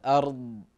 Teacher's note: الارض اذا وقفنا عليها ما فيها قلقله الضاد هذا حرف استطاله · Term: حرف استطالة